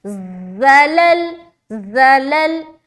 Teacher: जा को सख्ती से निकालेंगे, सीटी की आवाज भी आएगी